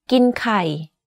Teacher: The first word of this sentence, gin or eat, is in middle tone. But the last word, kai or eggs, is in low tone. You can hear that my pitch went slightly lower at the end of this sentence.